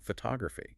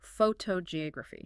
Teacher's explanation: Think about a word like photography. right, the stress is on the tog,